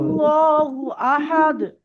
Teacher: আল্লাহ শব্দের লামুশাদ্দাদের পূর্বে জবর এসছে তাই এটা পুর হবে